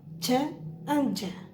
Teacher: Affricate, a combination of a stop followed by a fricative, an explosion with a slow release.